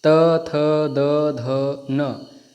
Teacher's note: आपका दांत जो है उससे टच हो रही है जीभा